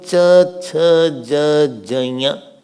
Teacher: So cha, cha, ja, ja, ya. This is called talavya, palatal.